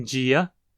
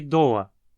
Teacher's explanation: O fone di ocorre apenas antes de um i. Em qualquer outra posição das palavras temos o som d. Eles estão em distribuição complementar, então são alofones.